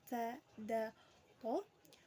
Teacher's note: Ujung lidah bertemu dengan gusi gigi depan bagian atas hurufnya ta, da, to.